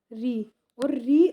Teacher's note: अगर हम पढ़ेंगे तो जो हमारी जीव है वह उल्टी हो जाएगी और ऊपर के साइड जाकर के लगेगी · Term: मूर्धन्य